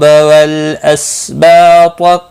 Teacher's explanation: طا مستعلیہ ہے، پر پڑھا جائے گا · با الف مدہ ہے، ایک الف کے برابر کھینچ کر پڑھیں گے